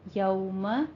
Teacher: دونوں ہونٹوں کو ناتمام گول کرتے ہوئے ادا کریں گے